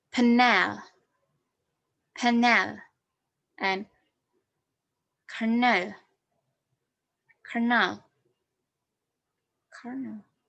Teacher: The syllabic consonant L is a weak syllable